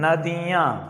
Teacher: नदियां मतलब मुंह से तो आप बोल ही रहे हैं नाक से भी निकल रही है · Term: अनुनासिक